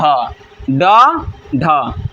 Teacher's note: हमारे जीभ के ऊपर में मूर्धा है, ठीक ना, जिसको हम बोलते हैं उच्चारण स्थान। तो जीभ पहले ऊपर उठकर मूर्धा को स्पर्श करता है और फिर झटके के साथ नीचे आता है, तो उसे हम क्या कहेंगे, उच्छिब्द व्यंजन कहेंगे। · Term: उत्क्षिप्त व्यंजन